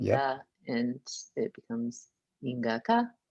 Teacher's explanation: the schwa is becoming an ah because of that little vowel harmony bit